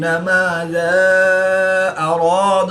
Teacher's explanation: الف مدہ کے بعد حمزہ دوسرے کلمے میں ہے تو یہاں پر مد منفصل ہوگی، 2 سے 3 الف تک کھینچ کر پڑھیں گے